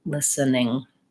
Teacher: in that word, we pretty much don't say that T sound. I don't say listening. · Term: The T is silent